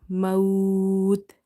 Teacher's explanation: Last letter is silent and second last letter is your lean letter. So you will stretch up to 3 alif. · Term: madde lean arid